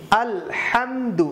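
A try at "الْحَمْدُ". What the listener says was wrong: এখানেও হাটা শক্ত করে, আলহামদু বলা যাবে না,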